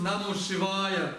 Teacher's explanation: То есть там «а» долгое, это несомненно «Шивая».